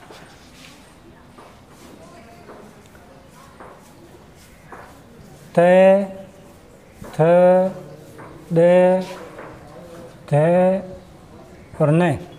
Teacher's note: दंत्य वर्ण, जब जीभ दांतों को स्पर्श करती है